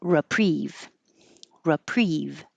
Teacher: You can say this read with an e. Some people say reprieve, but the re is not stressed. So it's more likely that it'll change to an uh or an i.